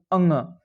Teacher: अंग बोलेंगे तो आपका उच्चारण जो होगा वो नाक और मुंह दोनों से ही उसका उच्चारण होता है, मतलब प्राणवायु निकलता है। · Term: नासिक के व्यंजन